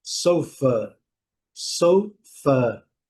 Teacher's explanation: É o A com o som do schwa, um som bem, bem leve.